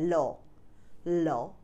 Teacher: পার্ষিক ব্যঞ্জন দুই পাশ দিয়ে হাওয়া বের হয়ে যায়